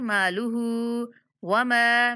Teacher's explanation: मीम के बाद अलिफ मद्दा है तो इसलिए मीम को भी 1 सेकंड तक लंबा करेंगे।